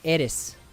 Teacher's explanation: so i say aerith it's because the way japanese is made it doesn't have a th sound so they have to use the su sound